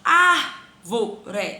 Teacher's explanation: proparoxítona a sílaba tônica é a antepenúltima · Penúltima, vó. E a antepenúltima é o ar, que é a minha sílaba tônica.